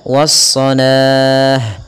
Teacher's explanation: kita boleh memanjangkan la-nya 2 harakat atau 4 harakat ataupun 6 harakat